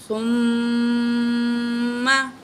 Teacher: ثم، سا پڑھنی ہے، سین نہیں پڑھنی